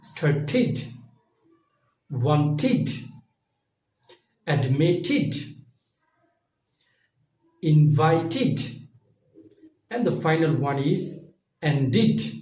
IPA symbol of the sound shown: Id